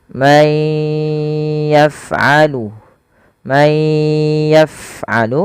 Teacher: Yang pertama langkahnya adalah masukkan suara nunnya kepada huruf ya dan ditahan.